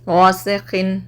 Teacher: आपको नून की आवाज़ ज़ाहिर करना है और जल्दी पढ़ना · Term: इज़हार